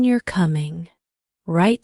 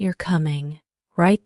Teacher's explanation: For example, the question "you're coming" right sounds different from the statement "you're coming." Right, the first one has a rising intonation and the second has a more neutral tone